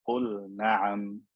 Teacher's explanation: I don't merge the lam into the noon